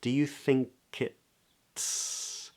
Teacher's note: so the tip of the tongue comes up for the T and then we release him to a into an S tipalert